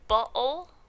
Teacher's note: you cut off the air at your larynx, so your vocal cords are totally closed and no air is going through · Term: glottal stop